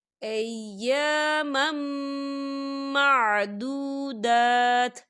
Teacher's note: یہاں دیکھیں ایامم، یہاں میم کے اوپر تنوین ہے اور تنوین کے بعد میم آ رہا ہے، اور میم جو ہے حروف یرملون میں سے ہے تو یہاں پر ادغام ہوگا اور ہم اسے غنّے کے ساتھ پڑھیں گے